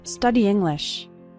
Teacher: study English study English those two words kind of run together the E from study and the I from English kind of combine